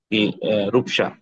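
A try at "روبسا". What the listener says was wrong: রূপসা, তো আপনি তো রূপসা বলতে পারবেন না আপনার, রূপসা। প বলতে পারবেন না, হ্যাঁ আপনাকে ব বলতে হবে আর কি।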